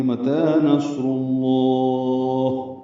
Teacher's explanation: پڑھیں گے اور وقف کر دیں گے، متا نصر اللہ وقفاً، لام کو پر کرتے ہوئے لمبا کریں گے اور ہا ساکن پہ ہمس ہوگا